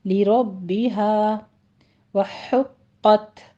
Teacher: ہا وسط حلق سے باریک ادا کریں گے، قوف کے پر تشدید اسی طرح سے آگے تا پر حمز کریں گے۔